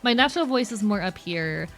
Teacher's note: Very soft-spoken, not a lot of air use. Very vocal fry heavy, and I used to have a southern accent on top of it.